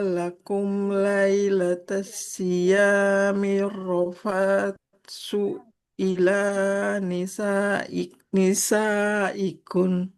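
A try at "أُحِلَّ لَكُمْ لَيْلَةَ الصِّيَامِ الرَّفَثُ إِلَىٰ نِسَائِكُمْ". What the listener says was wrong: Nah, di sini roknya kan bertasydid. Jangan lupa untuk ditekan. Nah, nisaikum. Pakai mim. kemudian huruf sa-nya. Huruf sa-nya nggak boleh panjang. Dhammahnya nggak ada wawu di depannya. Berarti tidak panjang.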